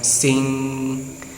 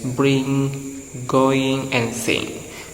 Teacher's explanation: back of tongue comes up and makes contact with the soft palate · this nasal is formed at the back of mouth